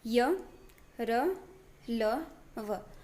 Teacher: इन व्यंजनों का उच्चारण स्वर तथा व्यंजन मध्य का सा होता है। उच्चारण के समय जीवा मुख के किसी भाग को स्पर्श नहीं करती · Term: अंतस्थ व्यंजन